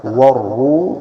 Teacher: کو لمبا کریں گے، ملائکۃ، والروح، والروح، را کو موٹا، والروح، حا کو وسط حلق سے ادا کریں، حلق کا جو درمیانہ حصہ ہے